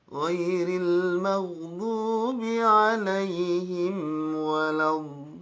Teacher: Yang bikin gak bisa kembali itu di nada yang turunnya Bu. Ibu tuh selalu naik pas harusnya turun. Kenapa? Karena ibu sering menggunakan nada setengah di tengah-tengahnya.